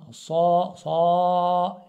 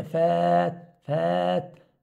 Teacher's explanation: فتجد الالف التي قبلها الصاد مفخمه